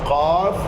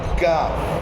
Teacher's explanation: اسی قاف کے مخرج سے تھوڑا سا نیچے کی طرف منہ کی جانب یہی زبان کی جڑ جب اوپر جا کے لگے تو کاف نکلتا ہے